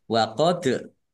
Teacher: Dal sukun bacaan Qalqalah dibaca memantul ditampakkan pantulannya waqod nazzala zanya dibaca dobel ada tasdidnya ditekan biar takum mim